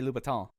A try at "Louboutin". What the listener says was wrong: Well, they don't say it quite so French. Just a little Louboutin.